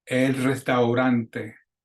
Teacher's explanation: Notice in restaurante, you have that AU combination, that diphthong, and you got to pronounce both of them. Don't say restaurante, restaurante.